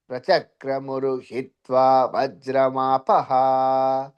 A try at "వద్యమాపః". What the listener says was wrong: వజ్ర కాదండి వద్య.